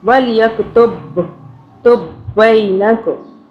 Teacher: با کی 2 مرتبہ آواز بنائیں گے اور ایک با جو ہے وہ قلقلہ کر لیں گے ایک با پہ